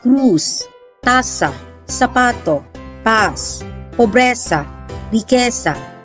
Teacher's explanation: in some regions of Spain, the letter C and the letter Z are pronounced more like Th, as in the word Thin.